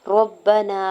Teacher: नून के ज़बर को काफ के ज़बर को बगैर खींचे हुए अदा करना है। रब्बना, रा को ज़बर की बेस पे पुर पढ़ेंगे और बाम शिद्दत के साथ मिलाते हुए पढ़ना है।